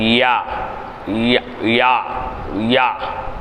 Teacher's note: யா நாவின் நடுப்பாகத்தை மேல்முரசில் சேர்த்து உச்சரிப்பு.